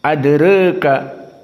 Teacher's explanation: dibaca dalam keadaan at-taqlil, mendekati kepada kasroh namun masih jauh dari kasroh